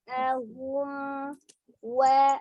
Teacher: Disempurnakan bunyi huruf mimnya dengan menyatukan kedua bibir ya. Sifatnya mengalir. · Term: izhar safawi